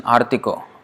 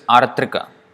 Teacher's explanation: So A becomes O in Bengali.